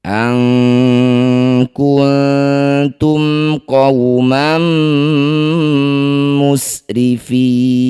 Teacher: Mim sukun bertemu qaf, mim sukun bertemu bukan mim bukan ba, disebut bacaan namanya izhar syafawi. Baca jelas bunyi mim, tidak usah didengungkan.